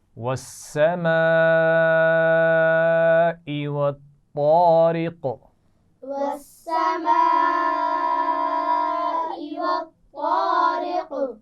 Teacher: طا موٹی پڑھی جائے گی اور قاف پر قلقلہ کیا جائے گا